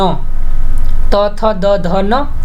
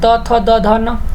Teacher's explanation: पूरे त वर्ग का उच्चारण स्थान दंत होता है